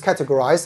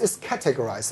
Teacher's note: the stress is on cat, the first syllable